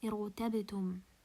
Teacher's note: Because the ra is sakina is preceded by hamzat al-wasl. Irtabitum, ra sakina and preceded by hamzat al-wasl. So I will pronounce the ra as a heavy letter